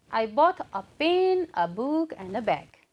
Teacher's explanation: while saying a pen and book, the voice raises and then a bag, again it falls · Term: rise fall intonation